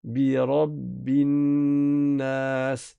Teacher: Il y a une règle qui est que lorsque vous avez un noun avec une shadda, non seulement vous allez prononcer le noun avec sa shadda, donc vous allez rester appuyé, dédoubler la lettre, mais en plus, vous prononcez la runna. Quand il y a noun avec shadda, ou bien mim avec shadda, on fait une runna.